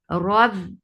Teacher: Rabbi ra is heavy for fatha upon jaws attached with ba. Ba will get sifa of shidda. The sound will cut off abruptly. Rob, and then it is 2 counts long.